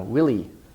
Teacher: clear stress on the first syllable, and the second syllable is light